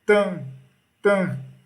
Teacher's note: Ele sai pelo nariz, então ele é nasalizado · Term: dígrafo vocálico